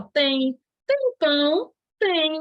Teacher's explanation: Ó o izinho ao final. Em todas essas palavrinhas tem ditongo fonético.